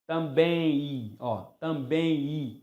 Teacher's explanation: Ninguém pronuncia também, só o Silvio Santos. Nós pronunciamos também i. Nós transformamos o M em i. Por isso tem um ditongo.